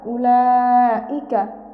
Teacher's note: মাদের হরফের উপর মোটা চিহ্ন এবং বামে হামজা, আমরা এখানে 4 আলিফ টান দিয়ে পড়ব। কাফ জবর কা, উলাইকা।